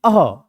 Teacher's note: विसर्ग का उच्चारण स्थान क्या होगा, आपका कंठ होगा